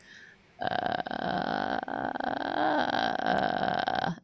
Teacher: just very light like one percent power of vocal fry · it's almost like a cat purring like you're not really making any tone or singing at all you're just doing the vocal fire because it's a nice low